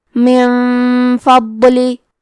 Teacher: فا حروف الاخفاء میں سے ہے، تو ہم یہ حکم کو غنہ کے ساتھ ادا کریں گے